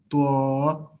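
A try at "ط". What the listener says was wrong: The twa, there should not be a vowel sound in between.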